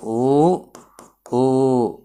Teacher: పెదవుల సహాయంతో ఊ అను ఇగో చూడు పెదవులు రెండు ఉండ్రంగా సంచరించుకొని పలుకుతాయి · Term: ఓష్ట్యాలు